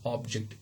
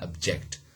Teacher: the stress from first syllable to the second syllable or middle syllable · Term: stress modification